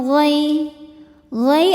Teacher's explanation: ada harfulin karena ya sukun didahului harakat fathah. Cara bacanya lembut atau lunak.